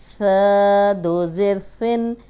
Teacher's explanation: اب ثا نرم حرف ہے، اس میں سیٹی کی آواز نہیں آنی چاہیے۔ اگر ہم پڑھیں گے سا 2 زیر سن، سین 2 زیر سن، صاد 2 زیر سن، تو سن سن سن ہم تینوں ایک جیسے پڑھیں گے تو قرآن کا ترجمہ بدل جائے گا۔